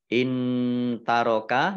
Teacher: nun sukun bertemu dengan huruf ta bacaan ikhfa dibaca samar-samar.